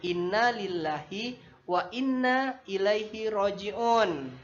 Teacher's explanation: Karena sebelum kata Allah itu bertanda kasrah bertanda ih dibaca ih sehingga tidak dibaca tebal